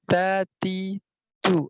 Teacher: Ujung lidah menyentuh pada pangkal gigi seri atas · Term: huruf ta